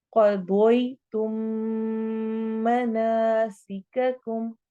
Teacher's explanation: इदगाम शफवी हो रहा है, मीम साकिन के बाद मीम आ रहा है, तो इसलिए हम यहाँ पे इदगाम करेंगे।